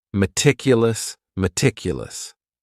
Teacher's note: this word has four syllables. And the stress is on that second syllable.